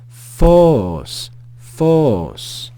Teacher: we then have an Omega with the circumflex accent above it so we're going to rise and fall in pitch and a final Sigma Force Force Force listen to the rise